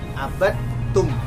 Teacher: Huruf dal, bacaan huruf dal dimasukkan kepada huruf ta. Yang muncul adalah huruf ta, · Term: idgham mutajanisain